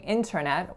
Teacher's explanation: in Canada I grew up saying Internet with that T being released